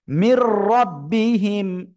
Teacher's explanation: গুন্না ছাড়া মিলিয়ে পড়তে হবে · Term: ঈদগামে বেলাগুন্না